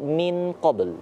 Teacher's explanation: Karena nun mati bertemu qaf itu ikhfa, dibaca sama-sama.